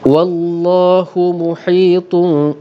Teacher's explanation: Muhitun didengungkan 2 harakat dengan keadaan kedua-dua bibir bersentuhan secara sangat ringan, tidak dikemamkan dan tidak dibuka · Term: iqlab